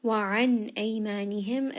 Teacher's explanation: nun is going to have idhar because it is followed by the letter hamza, which is one of the throat letters. Ay, this is going to be madd lin, madd lin madd one and a half.